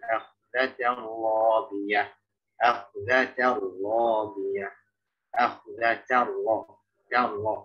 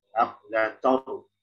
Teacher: antara tak sama roh ya, yang taknya tipis, yang rohnya tebal. Jadi kalau misalnya tak itu yang tipis ketemu tebal, maka tipis itu harus harus tetap menjaga ketipisan.